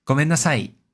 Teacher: in gomennasai, the e drops in pitch compared to oyasuminasai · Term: pitch accent